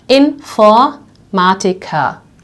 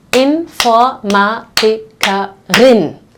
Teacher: So the word ends on the R, which we will pronounce like an A, right? Here we have the female version of this profession when it ends on IN, in German EN.